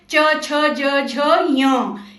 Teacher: इस लाइन को बोलते समय जीभ मुंह की छत ऊपर उसको छूती है · चम्मच से खाना खाते समय जैसे जीभ ऊपर लगती है ना तो हम च वर्ग के अक्षर तालु मतलब मुंह की छत से बोलते हैं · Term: तालु वाली लाइन